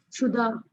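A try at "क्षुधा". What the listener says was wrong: Kshuda. It is kshu. Kshuddha, not Shuddha or Sudha. Sudha in the beginning. It is Kshuddha.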